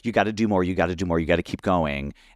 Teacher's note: it's a fast-paced breathy voice. It is an anxious voice.